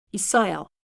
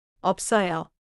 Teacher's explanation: The first one is smooth, and the second one has the closed lips before 써요.